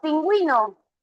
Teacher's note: pingüino tú vas a pronunciar aquí la u suena y si suena se forma diptongo verdadero